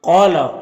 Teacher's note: قال، قاف یہاں پر حروف مستعلیہ میں سے ہے تو اسے پر پڑھیں گے۔ یہاں پر الف سے پہلے قاف کے اوپر زبر ہے تو الف مدہ ہوگا، اسے ایک الف کے برابر کھینچ کر پڑھیں گے۔